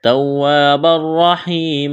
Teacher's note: را کو موٹا کرنا ہے، را کے اوپر زبر ہے، یا ساکن سے پہلے زیر ہے، یا مدہ ہے، الف کے برابر کھینچنا ہے۔